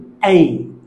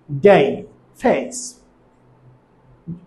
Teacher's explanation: যেমন আমরা যখন বলি এই, তখন লক্ষ্য করো উচ্চারণটি মিড ফ্রন্ট থেকে হাই ফ্রন্টে যাবে, ঠোঁটটি আনরাউন্ডেড হবে। যেমন ডে, ফেস। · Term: ডিফথিংস